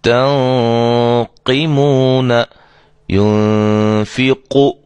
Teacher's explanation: نون ساکن کے بعد حروف مستعلیہ میں سے، یعنی موٹے حروف میں سے قاف آ گئی ہے، لہذا یہاں ہم اس غنے کو بھی موٹا کریں گے